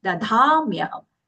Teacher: Then first da is alpa prana, then the dha mahaprana kicks in. So we have to take it, not switching the mahaprana alpa prana, just a little attention to that point.